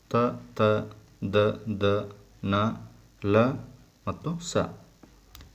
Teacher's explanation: ಹಲ್ಲುಗಳ ಸಹಾಯದಿಂದ ಹುಟ್ಟುವ ಅಕ್ಷರಗಳಿಗೆ ದಂತ್ಯ ಅಕ್ಷರಗಳು ಎನ್ನುವರು